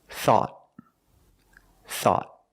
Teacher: At the end, the tongue goes up and makes a stop T. Not thought, but thought.